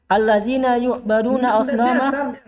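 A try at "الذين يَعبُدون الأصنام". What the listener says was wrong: Baca biasa. Jangan dikasih majhul.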